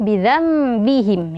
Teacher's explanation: Nah, Rabbuhum bi ya, langsung bidzambihim. Nah, ada nun sukun bertemu dengan ba. Sama seperti sebelumnya, hukumnya adalah iqlab. Jadi dibaca langsung bidzambi. Dirapatkan kedua bibir